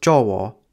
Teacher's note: with a being pronounced o at the end of words or before another o, so the word for Java is actually pronounced jowo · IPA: [dʒ̊ɔwɔ]